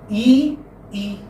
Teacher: Whether you say E or E, your lips are not rounded, they are unrounded. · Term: closed vowel E